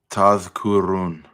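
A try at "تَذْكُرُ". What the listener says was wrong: It's just one dhamma there, but I see it's a little fuzzy, but it's just one. Tadhkuru. Tadhkuru.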